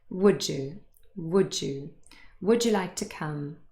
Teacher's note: And here is another example that's actually very, very similar, only that here we have d, the voiced plosive d, followed by y. And so instead of that changing to ch, the unvoiced sound, we have j, the voiced pair really. J. Have a look at this sentence here. · So we have would ending in d and you again with y, the weak form. And what happens when we say it fast, they are joined together, but really there's a new sound here and it's j.